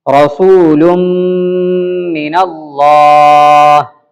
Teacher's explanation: غنہ ہو رہا ہے، دو غنہ ہے لیکن ہوگا ایک ہی الف کے برابر